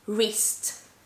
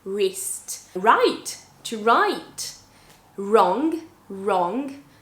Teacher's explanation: when you have the w plus r then you're just pronouncing the r